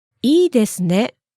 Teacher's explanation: Please note that you can say this expression in a falling tone.